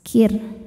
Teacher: Cara bacanya, ra dibaca dengan tipis · Ro sukun dibaca secara tarqik karena sebelum ro sukun ada huruf berharakat kasrah. Cara bacanya roho dibaca dengan tipis. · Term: tarqiq